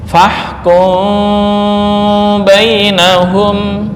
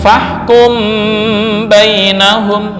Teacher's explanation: Mengikhfakan mim berarti dibaca dengan samar bukan bibir tertutup 100% ya.